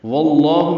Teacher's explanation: واللہ میں واو کو لام اسم جلالہ سے ملانا ہے، لام اسم جلالہ کو واو کی زبر کی وجہ سے پر پڑھنا ہے